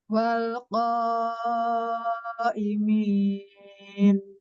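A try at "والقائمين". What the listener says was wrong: Kan suaranya ke langit-langit coba. nah, jangan ke depan ya, tapi ke atas dulu baru nanti keluar.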